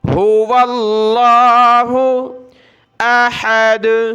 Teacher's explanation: ہو اللہ نہیں پڑھنا، واو کو لفظ اللہ کے ساتھ ملانا ہے